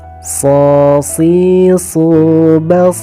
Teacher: untuk huruf sad ini karena termasuk huruf tebal, maka pangkal lidah sedikit diangkat ke atas.